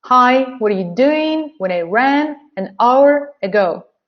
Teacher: So content words are hi, doing, ran, an hour. And structural words are what, were, you, when, I, and ago. They are weak.